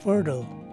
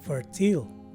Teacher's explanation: the letter I here takes a much softer schwa sound. It's there, yet it's almost not there. It's almost negligible. And lastly, the letter E at the end of the word is dropped.